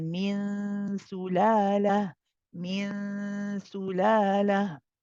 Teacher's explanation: As you say the ghunna, min, as you say this, the tongue is at the articulation point of sin, which is behind the lower two incisors. Okay, and we do prolong this ghunna. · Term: ikhfa haqiqi